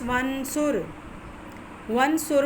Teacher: جیسے مثال ہے ہمارے پاس ونصر، ونصر میں حمزہ وصلی سے پہلے واو متحرک ہے، اس وجہ سے حمزہ وصلی پڑھنے میں نہیں آ رہا